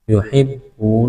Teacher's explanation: واو مدہ ہے، کھینچنا ہے، ایک الف کے برابر